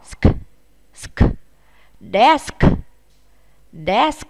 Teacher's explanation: Chúng ta lưu ý với từ bàn này chúng ta đọc và phải bật hơi cả chữ S và chữ K nhé